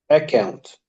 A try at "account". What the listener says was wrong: Too much students say account. Don't stress the k sound because you have to say account, not account. no stress on K, on the double C, which is K. Be careful of the vowel and consonant letters.